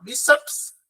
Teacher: Então, essa última palavra aí, ela é uma paroxítona, porque ela só tem, inclusive, duas sílabas e a penúltima é a mais forte